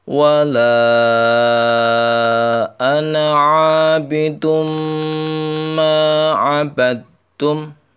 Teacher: Wala ana yaitu 5 ketukan, bacaannya mad jaiz.